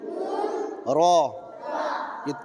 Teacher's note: सिरा जबान तालू से मिलकर तालू से र अदा होती है